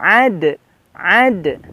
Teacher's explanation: setelah ini ada huruf Dal ad pantulan qalqalahnya